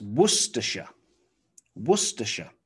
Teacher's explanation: Again, it has the C-E-S-T-E-R, so st, Worcestershire, Worcestershire. And here, the S-H-I-R-E is simply pronounced sh, sh. You might think it's shire, and you might hear on movies or TV shows, Worcestershire.